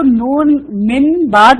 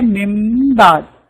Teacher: اس کو نون کو میم سے بدل کے پڑھیں گے مم بعد. اب یہ چھوٹا میم ڈالنا پڑے گا.